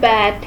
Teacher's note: It is an unrounded vowel which is produced when tongue is in the front low position in the mouth.